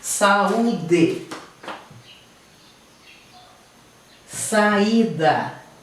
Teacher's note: U e I em hiato com a vogal anterior, com o som anterior. Aí esse I e esse U são acentuados.